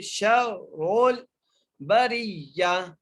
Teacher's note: را کو موٹا کر کے پڑھنا ہے کیونکہ را کے اوپر پیش ہے